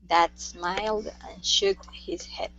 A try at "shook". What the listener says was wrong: make sure to go to a k sound instead of a t